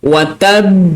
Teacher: So, lantunan bagi huruf ba yang bersabdu berlakunya qalqalah lambat. Lambat sikit.